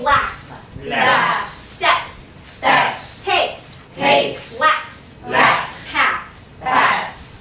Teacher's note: Now it remains S after consonants F, P, K, T, and TH.